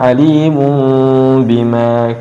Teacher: iqlab dibalik huruf n-nya atau tanwinnya ke huruf yang lainnya yaitu huruf mim